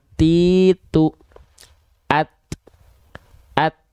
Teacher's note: Ujung lidahnya kita sentuhkan ke pangkal gigi seri atas kita. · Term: huruf ta